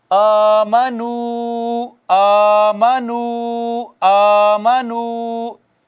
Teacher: वाओ साकिन मा कबल मदमूम वाओ मद्दा, ये भी एक अलिफ के बराबर खींचेंगे